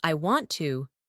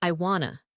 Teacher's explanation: when a native speaker says I want to, it often sounds like I wanna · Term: reduction